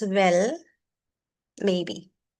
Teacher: when there's an uncertainty, we fall and then we rise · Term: the fall and the rise